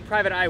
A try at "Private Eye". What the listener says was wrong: weird. It sounds like one word when you say it. No, here. Say Private. And now say I.